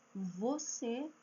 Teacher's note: Quando eu falo eh você, eu uso o dente e o meu lábio